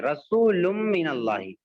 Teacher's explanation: مع الغنہ کا مطلب ہوتا ہے کہ تنوین نون ساکن کے بعد میں اگر یا واو میم نون، یا واو میم نون آئے تو نون کی آواز کو ناک میں تھوڑا سا چھپا دیں گے اور روک لیں گے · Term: ادغام مع الغنہ